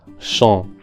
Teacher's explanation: In the first word, champs, we have the nasal vowel en, which is the O sound that we find in the English word lot, but nasalized.